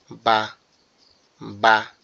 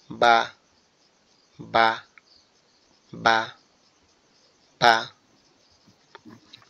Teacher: বা বা দুই ঠোঁট দুইটা কি হবে, একসাথে লেগে থাকবে। যখন আওয়াজটা বের হবে তখন ঠোঁট দুইটা খুলে যাবে।